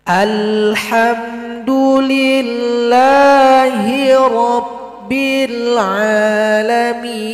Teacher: Ini ain, jangan dibaca hamzah. Rabbil a, itu a. Ini a. Tengah tenggorokan.